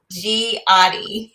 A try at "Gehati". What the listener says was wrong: Gehati. It's a hard G. It's a hard G.